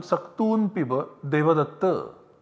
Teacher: the final vowel in the sentence gets prolated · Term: pluta vowel